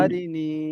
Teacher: আর নুনের ইয়া আহ, সাকিনের ডান দিকে। ডান দিকে জের এসে একে এক আলিফ টান দিতে হয় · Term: ইয়া মাদ্দা